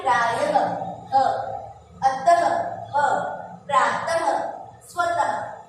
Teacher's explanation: विसर्ग का जो उच्चारण होता है, इसमें अंत में ह की आवाज